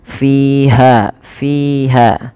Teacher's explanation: fi dan ha kedua-duanya mad thabi'i. Yaitu panjangnya dua harakat.